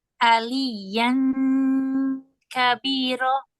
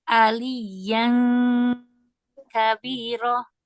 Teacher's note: Ini disertai gunnah dari hidung karena dia aliyan kabiro.